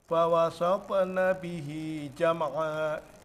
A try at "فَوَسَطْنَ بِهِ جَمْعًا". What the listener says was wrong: فوسطنا به جمعا جمعا jangan sampai jama'a bukan jam'a, jangan sampai kepantul jam'a